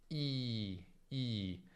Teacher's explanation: I, per esempio, è una vocale dove la lingua è alta e quindi una vocale chiusa.